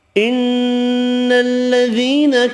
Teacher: ان الذین، نون مشدد پر غنہ کریں گے، یا مدہ ایک الف کی مقدار میں کھینچ کر پڑھیں گے